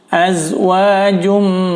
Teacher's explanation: Di sini jangan sampai dipantul karena bukan huruf qalqalah. Azwajum, tanwin bertemu mim itu idgham bi gunnah ya. Selain dileburkan juga harus didengung. Azwajum, ditahan 4 ketukan.